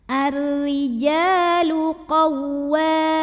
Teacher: Mad tabi'inya mad tabi'i zahiri. Karena ada alif yang didahului baris fathah, maka jimnya kita panjangkan 2 harokat saja.